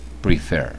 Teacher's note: why we double the final consonant another example is prefer two syllables it finishes in consonant vowel consonant and the stress is on the last syllable